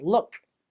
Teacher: So I stop the air and then make a little click sound for the K.